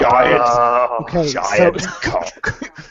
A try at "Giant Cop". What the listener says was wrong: Giant Cop. Cop with a P.